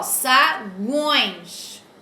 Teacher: o som saiu pelo nariz, então aqui é um tritongo nasal